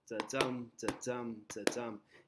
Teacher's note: So each feet with the stress being on the second syllable.